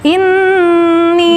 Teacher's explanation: nun dengung, ditahan dulu, tidak langsung ini, ya ditahan dulu, dengungnya 3 harokat